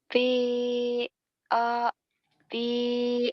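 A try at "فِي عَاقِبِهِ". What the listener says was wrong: Fi akibihi jangan F aki-aki bukan p enggak bisa gitu aja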